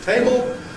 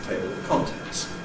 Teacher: Syllabic L, all right, it's dark, it's a table, but it's clear if you have a vowel following